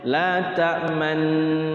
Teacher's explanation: Ismam itu mencucuk di tengah-tengah dengung ya.